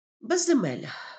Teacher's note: закінчується на з і корінь теж починається на з і тому в слові безземелля є подвоєння внаслідок збігу двох приголосних на межі префікса та кореня · кореня Але у слові безземелля також є подвоєння внаслідок подовження приголосних м'які приголосні в даному випадку л Опинившись між голосними е і а можуть подовжуватися